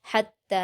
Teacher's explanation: تا پر تشدید ہے، ہا کو تا سے ملا کر سختی کے ساتھ پڑھیں گے